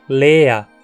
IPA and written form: leːɐ (ensinamento)